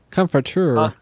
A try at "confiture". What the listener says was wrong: Confiture, like Like a comfy chair with an N instead of an M. Confiture.